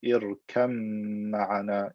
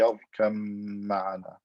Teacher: merge the ba into the mim